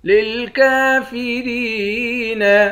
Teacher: للکافرین، کاف پر کھڑا زبر ہے، 1 الف کے مقدار کھینچیں گے کھڑے زبر کو، را کو یا کے ساتھ ملا کر یا کو 1 الف کے مقدار کھینچ کر پڑھیں گے